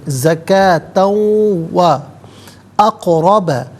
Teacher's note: قاف ساکن ہے لیکن حرف قلقلہ ہے، آواز لوٹتی ہوئی محسوس ہونی چاہیے. اقرب را پر زبر ہے، را کو پر کر کے پڑھا جائے گا.